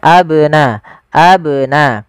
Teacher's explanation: Kemudian pelafal abnaakum ada huruf ba ini bnya berharakat sukun dan dia ba salah satu huruf qalqalah yang di mana dia harus memantul